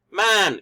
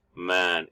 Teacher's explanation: the word man for Mandarin Chinese may mean either deceive or slow depending on its pitch